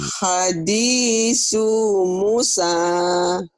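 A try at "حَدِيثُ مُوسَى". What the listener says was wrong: Soalnya kan nggak ada yang manjangin Bu. Ini ada yang di garis bawah itu yang panjang-panjang. Hadisu Musa. Hadisu Musa.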